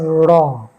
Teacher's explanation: জীবটা কাপছে রটা vibration হচ্ছে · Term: কম্পিত ব্যঞ্জন